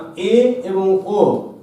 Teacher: জিহ্বা উচ্চ মধ্য স্থানে অবস্থান করে, তাই এ এবং ও এই দুটো স্বরধ্বনিকে আমরা বলছি উচ্চ মধ্যস্বর